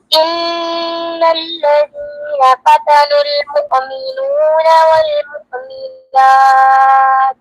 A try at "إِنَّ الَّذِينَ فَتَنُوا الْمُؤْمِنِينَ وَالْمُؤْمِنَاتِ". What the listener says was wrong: बेटे मुमिनूना नहीं है, मुमिनीना है, गौर से देखो, हमजा को झटका देना है। इन्नल्लज़ीना फतनुल मुमिनीना वल मुमिनात।